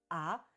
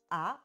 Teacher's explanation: vous ferez « ah » et vous verrez que ça va abaisser votre langue